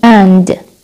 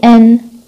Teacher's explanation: Now the word مثل كلمة and، إذا بدي أحكيها بstrong form بحكي and، weak بحكي an